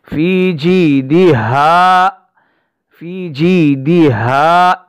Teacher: ہا کی آواز سینے سے آئے گی